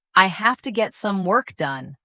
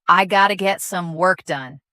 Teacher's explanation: Feel how have to naturally reduces to gotta, making it faster and smoother.